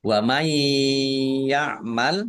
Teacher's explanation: nun sukun bertemu dengan huruf ya, yaitu bi gunah, masuk dengan mendengung, yaitu mendengung ya, ditahan agar tampak dengungannya